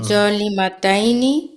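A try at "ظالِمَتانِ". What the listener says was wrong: মাতাইনি কেন? মাতানি, মাতানি, মাতাইনি কেন? মাতানি।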